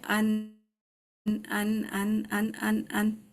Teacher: نون میں جو ہے نا زبان کی ٹپ ہماری ٹچ ہوتی ہے